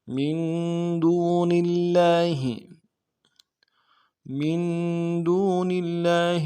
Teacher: زیر ہے، اس کو آگے لام کے ساتھ ملا لیں گے، لام کے اوپر تشدید ہے، کھڑا زبر ہے، ایک الف مقدار میں کھینچیں گے، تشدید کے اوپر زور دیں گے